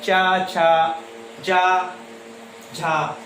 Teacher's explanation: स्पर्श संघर्षी व्यंजन वो व्यंजन होते हैं जिसमें व्यंजन ध्वनियाँ उच्चारण स्थानों को, जिह्वा जो है उच्चारण स्थानों को स्पर्श करती हुई संघर्ष के साथ मुख विवर से बाहर निकलती है, उन्हें स्पर्श संघर्षी व्यंजन कहते हैं।